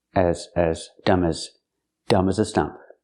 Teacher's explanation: As is not stressed. It's not an important word. So we don't say as with the ass sound like black cat. It's more closed.